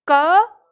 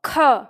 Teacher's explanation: के की तुलना में ख बोलने पर ज्यादा हवा बाहर निकलते है